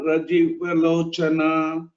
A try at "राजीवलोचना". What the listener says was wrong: Uttama Mahodaya, just that everywhere Dirgha has to be told. Like for example, Raja Rajarchita Ragni Ramya Rajivalochana, like this. Rajivalochana.